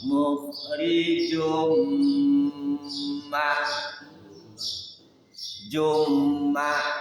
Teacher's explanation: muhrijun dimasukkan suara tanwin ke dalam mim